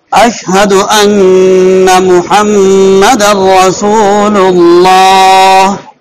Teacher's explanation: اشہد ان کا غنہ محمد کے اندر جو میم کا غنہ ہے وہ بھی نکلا ہے، اور محمد کا جو میم ہے مجہول نہ ہو، محمد نہیں ہو بلکہ محمد ہو۔